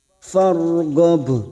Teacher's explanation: huruf ra sukun yang sebelumnya ada fathah kita baca tafkim atau tebal. Farghab, ghab, huruf ba sukun yang mati di akhir kalimat dan dibaca waqaf qalqalah kubra, jangan lupa dipantulkan.